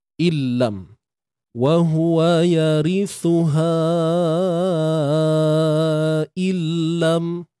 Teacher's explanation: Nun tu masuk ke dalam lam. Okay, lenyap makhraj, lenyap sifat. Yang hanya tinggal bunyi lam tu lah. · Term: idgham bila gunnah